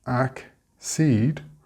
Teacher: we get accede with the stress on the seed